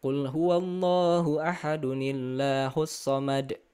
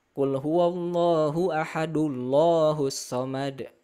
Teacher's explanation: Nah, kalau misalkan kita menggunakan berbagai macam mushaf, yang sekarang pun ya, mushaf itu kita harus hafal tanwin bertemu dengan alif atau alif wasol, ini pasti dia jadi nun wikoyah seperti itu atau nun silah ya. Jadi bacanya yang in jadi ini, yang an jadi ani, yang un jadi uni.